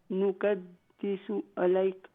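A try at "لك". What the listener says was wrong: इलैक नहीं है लक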